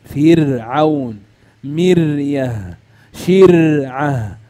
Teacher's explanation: الراء ترقق لانها ساكنه وقبلها كسر اصلي